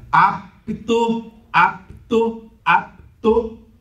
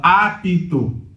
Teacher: o cânon da língua portuguesa diz que não pode ter oclusiva fechando sílaba, senão a tendência natural da língua é ressilabar esta palavra